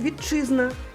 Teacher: Звук чи поглинає ти. І маємо чи подовжений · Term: поглинання